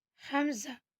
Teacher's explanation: یہ ہمارے حلق کے نیچے والے حصے سے نکلتا ہے